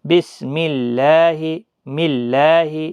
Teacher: میم کے نیچے زیر ہے اس لیے اللہ کا لام باریک ہوگا